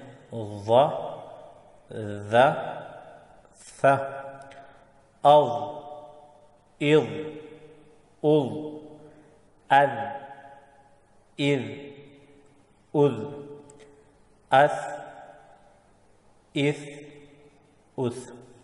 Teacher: زبان کی نوک جو ہے جب ثنایا علیا یعنی اوپر کے جو 2 دانت ہیں ان کے سرے سے جب لگے تو اس سے یہ 3 حروف ادا ہوتے ہیں، یعنی وا، ذال اور ثا ادا ہوتے ہیں۔ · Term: حروف لثویہ